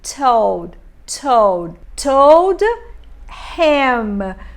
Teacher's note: T com Szinho, um T com esse chiadinho que eu falo. · Eu vou cortar também esse H do him e vou produzir am. Lembrando que esse I do him é um I curto, então eu não falo him.